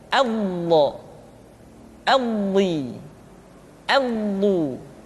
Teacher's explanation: Diucapkan dengan menyentuhkan dua sisi lidah kita dengan geraham-geraham atas. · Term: huruf do